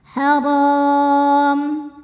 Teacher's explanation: Huruf ro dibunyikan secara tafkhim karena berbaris di atas maka dibacanya tebal